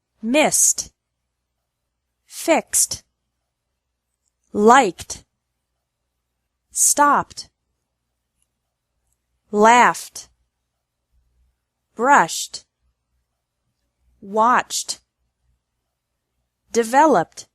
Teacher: ED is pronounced like T with no extra syllable after verbs ending in S, X, K, P, F, SH, and CH sounds.